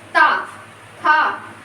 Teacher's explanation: आप बोल के देख लीजिएगा, ता, था। आप देख रहे होंगे कि आपकी जीभ जो है आपके दांतों को छू रही है, तभी वो शुद्ध उच्चारित हो रहा है